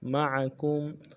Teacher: اگلے میم معکم کی میم کو نون سے ادا کرنا ہے، عین کو موٹا ادا کرنا ہے، کاف کو میم کے ساتھ ملانا ہے، میم ساکن ہے غنہ کریں گے